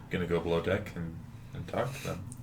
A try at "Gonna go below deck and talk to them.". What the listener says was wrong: You're blowing deck? The way you said that, it sounded like you said blow deck.